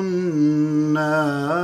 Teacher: النار النون مشددة غنة بمقدار حركتين